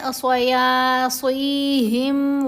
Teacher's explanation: ہم نے یا کی آواز کو تھوڑا سا لمبا کرنا ہے، بہت زیادہ لمبا نہیں کیا جاتا، مدہ حروف کو صرف 2 حرکات کی مقدار ہی لمبا کیا جائے گا۔ · صاد کو موٹا پڑھنا ہے، یہ بھی حروف مستعلیہ میں سے ہے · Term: حرف مدہ